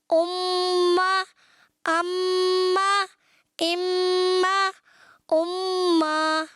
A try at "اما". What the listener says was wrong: اما. حرکت لمبی نہیں ہونی پیارے بچے، اگر حرکت کو لمبا کریں یہ غلط ہو جائے گا. آپ نے پڑھنا ہے اما. اما. اما.